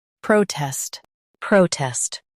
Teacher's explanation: Stress pro and keep tests quick.